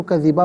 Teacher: علی اللہ کذبا، یہاں وقف پڑھیں گے تو کذبا پڑھیں گے، اس لیے کہ دو زبر کی تنوین وقف میں الف سے چینج ہو جاتی ہے